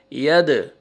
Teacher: دال دیکھیں حروف قلقلہ میں سے ہے، ڈبل ساؤنڈ آئے گا